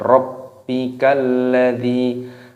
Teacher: dinya panjang, ada ya sukun, dipanjangkan.